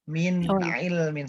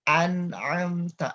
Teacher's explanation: agar tidak mantul ketika membaca bunyi Nun nya langsung dilepas langsung ke huruf Ain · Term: nun sukun